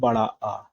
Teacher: मुख द्वार जो है विवृत में पूरा खुला रहता है।